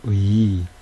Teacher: 발음의 시작점과 끝 지점의 음색이 달라지죠. 그럼에도 불구하고 이 의를 두 개의 모음으로 취급하지 않고 하나의 모음으로 취급하죠. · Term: 이중 모음